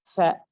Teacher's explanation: Huruf fa ya, itu bibir tuh. Fa, tapi fa itu bersentuhan dengan ujung gigi atas kita yang paling depan. Fa, jadi bukan fa, bukan fa.